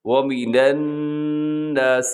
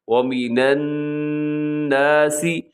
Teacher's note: یہاں نون مشدد ہے، یعنی نون کے اوپر شد آپ کو نظر آ رہا ہے الناسی میں، تو آپ نے یہاں غنہ کرنا ہے